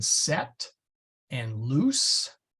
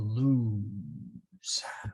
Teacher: S is unvoiced, meaning it is always as in set and loose, never like a Z as in lose.